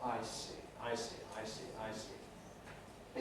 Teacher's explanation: the voicing switches on the vowel i the diphthong then switches off for the consonant and then on again for the vowel